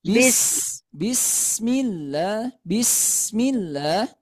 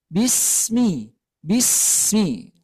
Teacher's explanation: Sin itu terdapat sifat rakwah rakwah itu suara yang mengalir bis Nah itu ya tidak Bismi kalau Bismi itu sedikit tertahan